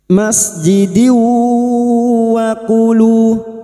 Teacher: Di luar kalimat idgam bighunah. Masuk pada huruf berikutnya yaitu huruf wau dan mendengung selama tiga harakat.